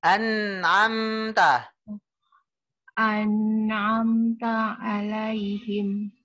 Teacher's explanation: Tekannya tuh ngalir. Jangan tegas jangan ya, tapi ngalir. Seolah-olah n-nya banyak gitu.